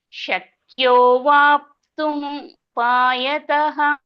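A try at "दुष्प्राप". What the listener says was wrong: ಅದು ದುಷ್ಪ್ರಾಪ ಮಾತಾಜಿ. ದುಷ್ಪ್ರಾಪ, ಪಾದು ಟಾ ಅಲ್ಲ, ಪಾ ಒತ್ತಕ್ಷರ. ಒತ್ತಕ್ಷರ ಪಾ ಇರೋದು. ಪಾ ರಾವತ್ತು ಎರಡಿದೆ.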